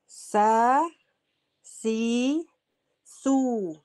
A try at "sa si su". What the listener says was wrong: Gini sainya ibu sudah bagus tinggal sunya belum.